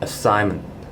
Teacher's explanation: In fact they are two Schwa sounds inside this word, assignment, which is the A at the front and the E at the back.